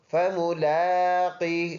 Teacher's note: لام میں کھڑی زبر ہونے کی وجہ سے ایک الف کے اندازے سے لمبا